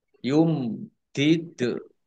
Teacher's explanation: Dal sukun bacaan qolqalah dibaca memantul ditampakkan pantulannya